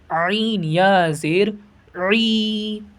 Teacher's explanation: حلق سے ادا کریں گے عین کو